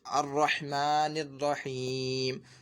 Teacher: میم کے نیچے زیر تھا لیکن ہم اب یہاں پہ رکتے ہیں وقف کرتے ہیں تو یہ میم کو زیر نہیں پڑھتے بلکہ ساکن کر دیتے ہیں